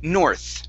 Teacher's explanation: This is going to be an unvoiced TH on the word north